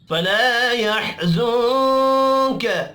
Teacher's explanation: फला अलिफ मद्दा है, एक अलिफ के बराबर खींच कर पढ़ेंगे